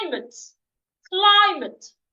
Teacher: Climate has two syllables and it's a noun. So I'm stressing the first syllable. That is why the C, the L, and the I are written in capital letter.